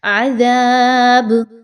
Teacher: با پر اگر جزم لگائیں گے، وقف کریں گے یہاں پہ تو با کو ہلا کر پڑھا جائے گا، قلقلہ کا قاعدہ جو ہے یہاں پر فالو کیا جائے گا۔